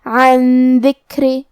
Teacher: نون ساکن کو چھپاتے ہوئے اور غنہ کے ساتھ یہ حکم کو ادا کریں گے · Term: اخفاء